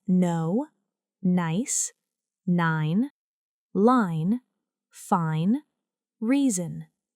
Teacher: This is a voiced nasal sound. The tongue touches the upper palate, and air flows through the nose. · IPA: /n/